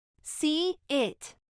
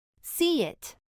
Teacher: esta intrusión de la y aparece cuando una palabra termina con un sonido semejante al de la vocal e en el abecedario